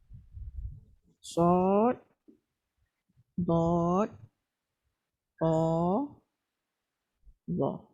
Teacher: Maknanya sad, dad, ta dengan za isti'la pangkal lidah ke atas dan tengah lidah pun ke atas. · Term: itba'